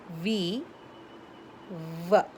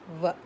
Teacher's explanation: The upper teeth touches the lower lip.